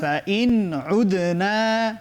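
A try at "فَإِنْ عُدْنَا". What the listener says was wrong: বেশ, মাশাআল্লাহ।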